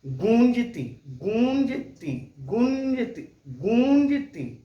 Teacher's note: मुंह हमारा बंद नहीं हो रहा है और मुंह से और नाक से दोनों से आवाज निकल रही है। गूं, देखिए मुंह खुली है, गोल भले हुआ है मुंह लेकिन खुली है।